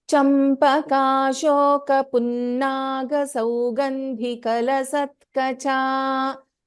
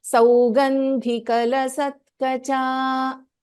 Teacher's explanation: In Saugandhi, Dha is Mahaprana and it's a Hrasvasvara.